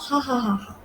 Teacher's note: if air passes through the glottis when it's narrow. The result is fricative sound for which the symbol, like for example, is H. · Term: narrow glottis